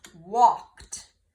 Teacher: And you can hear at the end, the ED makes a T sound.